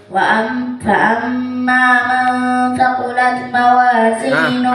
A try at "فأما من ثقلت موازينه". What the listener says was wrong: أين الهمس ثقلت تا